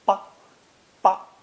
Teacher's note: The last character is always unstressed, pronounced ba, ba, in standard Mandarin.